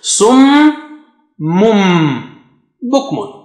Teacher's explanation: صا is very thick and high. صمم and ميم is مشدد, so you got to stretch. ميم has شدة, and then the تنوين on the ميم sitting behind is merging with با, replaced with ميم, so you have double stretch.